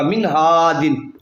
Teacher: یہاں بھی نون پہ جزم ہے، اس کے بعد ہا الف زبر ہا، ہا آ گیا، ہا حروف حلقی میں سے گننا نہیں ہوگا